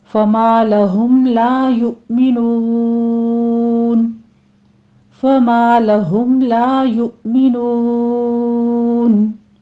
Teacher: فَمَا لَهُمْ لَا يُؤْمِنُونَ، فما میں الف مدہ، لا میں بھی الف مدہ ہے، لہم میں میم ساکن کا اظہار شفیع کریں گے